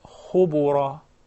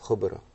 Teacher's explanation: the ba is one of the qalqala letters. So we will just apply qalqala and will not give it any other vowel.